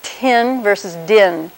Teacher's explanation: the tongue comes up to the alveolar ridge, closes off the whole vocal tract for a second, and then opens. So you say tin, or din if you vibrate your vocal folds earlier in the process. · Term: T and D